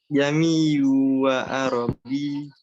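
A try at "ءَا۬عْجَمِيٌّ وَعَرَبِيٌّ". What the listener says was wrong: AA. Iya, masih dibaca AA. Hamzah yang kedua dibaca ringan.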